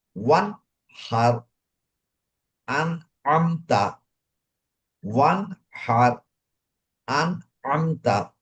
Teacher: আমি গুণনাও করলাম না, নুনটাকে পরিষ্কার ভাবে পড়লাম। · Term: ইজহার